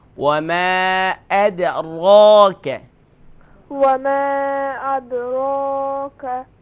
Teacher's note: Ra is recite full mouth.